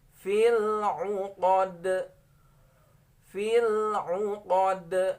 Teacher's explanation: Kalau nanti dibaca waqaf maka ini dal ini disukunkan memiliki sifat qalqalah. Jadi dibacanya fil uqad.